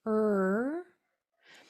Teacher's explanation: our mouth shape for R is R. So our mouth is forward and puckered a little bit.